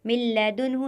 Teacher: نون ساکن کے بعد یہاں پر لام آیا ہوا ہے تو یہاں پر گننا نہیں ہوگا، بغیر گننے کے ادغام ہوگا